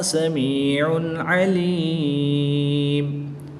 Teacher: میم کے اوپر 2 پیش کی تنوین ہے اور اس کو وقف میں ساکن کر دیں گے، اور جب میم کو ساکن کریں گے تو یہاں پر وقف کی حالت میں مد عارض ہوگی، 2 سے 3 الف تک کھینچ کر پڑھیں گے